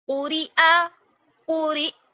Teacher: اب یہاں پر دیکھیے قرئ، یہاں پر حمزہ پہ جھٹکا لگے گا، جب ہم حمزہ کو ساکن کریں گے تو حمزہ پہ جھٹکا لگے گا